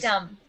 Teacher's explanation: We pronounce it with no B. Just dumb. Good question.